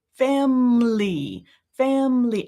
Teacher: I've got my both lips doing my M, and then my L